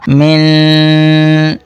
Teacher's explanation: نون کے اوپر اخفا یعنی غنہ ہوگا